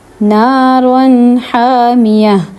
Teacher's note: اب یہاں دیکھیں نون کی علامت انہوں نے لکھی بھی ہوئی ہے کیونکہ یہاں پہ آپ نے اظہار کرنا ہے، کیونکہ دو زبر کے بعد حا ہے جو کہ حروف حلقی میں سے ہے، ٹھیک ہے. اگر تنوین کے بعد حروف حلقی آ جائے تو اظہار کرتے ہیں نون کا